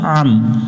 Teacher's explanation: আইন এটা গলার মধ্য থেকে একটু চেপে পড়তে হবে